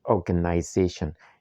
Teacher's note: the secondary stress here is on the first syllable or you can see the comma right there on the transcribed word.